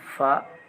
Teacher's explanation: फा ओष्ठ महाप्राण आघोष वर्ण है।